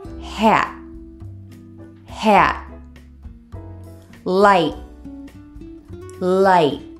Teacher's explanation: pull out the T sound hold it back in other words your mouth is in the position to pronounce the T but don't actually say it out loud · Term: held T